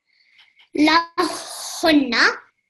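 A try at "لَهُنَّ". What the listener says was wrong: A bit more emphasis. So remember the noon is carrying the shadda. So this is noon mushaddad. So you want to pause on it a little bit and also produce the nasal sound.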